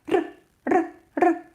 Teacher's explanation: When we pronounce r, we don't make it that long. We pronounce it really short, like r, r, r.